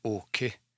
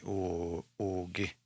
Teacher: I wouldn't say okay. I'd say oge. Because it's voiced. Eh? And I guess this one is going to sound more G on the front, but maybe more K on the back.